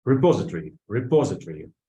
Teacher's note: the stress of the second syllable